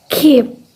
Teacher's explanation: In the final position, P is unaspirated and heard clearly as with keep.